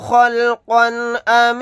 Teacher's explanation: قاف کے اوپر تنوین ہے، تنوین کے بعد حمزہ آ گیا، یہاں پر اظہار حلقی کا قاعدہ ہوگا